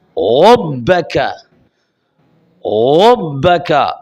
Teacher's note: را کو خوب موٹا پڑھنا ہے کہ را پر زبر ہے